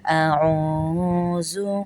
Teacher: واو کو کھینچیں گے کیونکہ واو مدہ ہے. واو ساکن ہو اور اس سے پہلے پیش آ جائے تو وہ واو مدہ کہلاتا ہے.